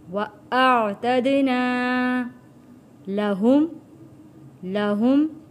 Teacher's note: بِمَصَابِيحَ وَجَعَلْنَاهَا رُجُومًا لِلشَّيَاطِينِ، را کو موٹا، رجومًا لِلشَّيَاطِينِ وَأَعْتَدْنَا، یہاں پہ حمزہ ہے اور عین ہے، حمزہ اور عین الگ واضح ہونے چاہیے۔